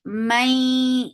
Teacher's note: this is idgham with gunna, so keep the sound in your nose for a longer time